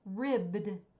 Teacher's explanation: ribbed which is two voiced consonants together